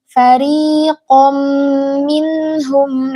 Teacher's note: Dalam kata fari minhum. Nah, rnya ini ro tipis jangan dibaca fari. Kebanyakan getarannya jangan.